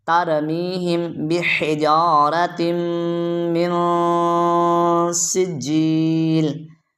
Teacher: یعنی سین سے سیٹی کی آواز آنی چاہیے